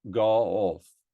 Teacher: What I'm hearing in Armenian is the O and A are reversed. So go off, which I would do in my general American, becomes go off.